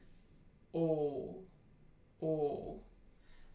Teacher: O is a long high mid back rounded tense vowel